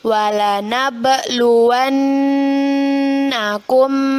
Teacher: Nun bertasydid hukum bacaannya yaitu gunnah arti ghunnah adalah berdengung jadi kita dengungkan dua harokat